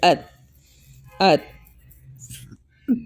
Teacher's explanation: آپ کی جو زبان ہوگی وہ آپ کے فرنٹ کے دونوں دانتوں کے اندر والی سائڈ پہ لگے گی